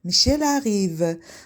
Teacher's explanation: Sonra əgər söz cümlə daxilində bir söz tələffüz olunan samitlə bitərsə, ikinci söz saitlə başlayarsa, bu zaman birinci sözün tələffüz olunan samiti ikinci sözün saiti ilə birləşərək bir heca əmələ gətirir. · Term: anjenoman